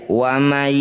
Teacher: Bacanya harus dengung dan masukkan bunyi nun pada ya. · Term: idgham bi gunnah